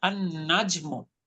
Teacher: দেখেন, তাহলে ভেঙে ভেঙে বলতে হবে আল নাজমু। আপনি একত্রে বলতে গেলে লাম বাদ দিয়ে পড়তে হবে আন নাজমু। অর্থাৎ যদি কোনো শব্দের শুরুতে সূর্যবর্ণ থাকে, তার সাথে যখন আমরা আলিফ লাম যুক্ত করব, আলিফ লামের লামের উচ্চারণটা হবে না।